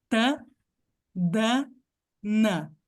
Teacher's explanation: a maioria das pessoas que falam português fazem o N no mesmo lugar do D e do T